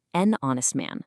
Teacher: But look at honest. The letter H is silent. It starts with an O sound, which is a vowel, so it's an honest man.